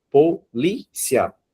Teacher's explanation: a sílaba forte não é a última, e sim a penúltima, né? Então, nós temos uma palavra que é paroxítona.